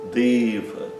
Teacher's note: O E fechado, longo, e o A curto, fechado.